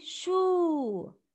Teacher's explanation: So Sheen with long vowel Dhamma will be Shu. So natural mad with wow is like putting two O after the sound instead of one, or stretch your sound with two beats